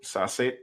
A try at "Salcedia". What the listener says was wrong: But it's not Salcedo, though. Salcedia. There's an A there.